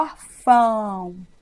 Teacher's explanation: Então, significa que esse órfão, esse O final, na verdade, tem som de U. Não à toa nós pronunciamos com a boca fechada. · quando você fala órfão, você fecha a boca no final. E quem faz você fechar a boca é o U. Porque o O faz com que você abra a boca.